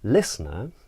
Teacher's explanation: a pitch that rises Falls and Rises at the very end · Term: circumflex inflection